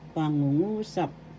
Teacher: The accent is in the third syllable, so you pronounce this pangungusap.